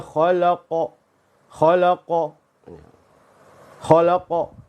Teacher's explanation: karena qof adalah huruf yang tebal maka ya ditebalkan suaranya lidahnya dinaikkan · qof adalah huruf yang tebal maka ya ditebalkan suaranya lidahnya dinaikkan harakat qalqalahnya tidak cenderung pada harakat huruf sebelumnya